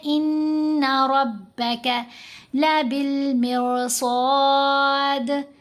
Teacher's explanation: ان ربک لبالمرصاد، صاد کو موٹا پڑھیں گے، ساتھ الف ہے تو الف بھی موٹا پڑھا جائے گا. ان نون کے اوپر غنہ کریں گے اور را کو موٹا پڑھیں گے کیونکہ را کے اوپر زبر ہے.